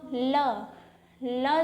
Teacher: ल जो है हमारा पार्श्विक ध्वनि है पार्श्विक मतलब जब ल का उच्चारण करते हैं तो हमारी जिआ